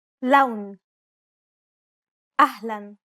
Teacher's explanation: unlike the English L the tongue is ever so slightly flatter and straighter in Arabic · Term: Arabic l sound, Arabic L sound